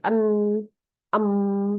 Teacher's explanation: Jadi bunyi-bunyi seperti en, em, ya, itu rongga hidungnya terbuka ya. Jadi ada angin yang keluar dari hidung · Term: nasal